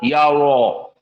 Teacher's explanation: Pertama, si mulut dipenuhi udara, ya ro. Dan yang kedua, lisan kita cenderung mengarah kepada al-hanak al-a'la di atas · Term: mufakhamah